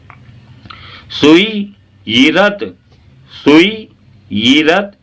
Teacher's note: सुई कह के हल्का सा झटका रोक कर सुई, इस तरह से फिर दोबारा से यीरत कहें आप। सुई यीरत, सुई यीरत, ई ना कहें ये कहें जबान के नीचे से।